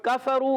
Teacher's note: کاف زبان کی جڑ اور تالو کے سخت حصے سے ادا